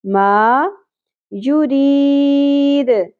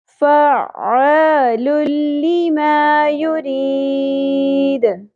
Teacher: میم کے اوپر زبر، الف حرف مدہ کے ساتھ، ما یرید مد عارض وقفی کے ساتھ، دال ساکن پہ قلقلہ ہوگا